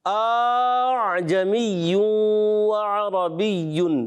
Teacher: دوسرے حمزہ کو الف سے ہی بدل دیا آپ نے، اعجمی وعربی، یہ بھی غلط ہو گیا۔